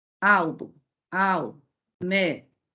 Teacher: todas são paroxítonas, por possuírem a sílaba tônica na penúltima sílaba